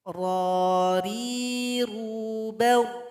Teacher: Sifat dari huruf ra ini adalah takrir. Pengulangan atau getarannya cuma sekali. Ra. Salah kalau dibaca ro, itu nggak boleh.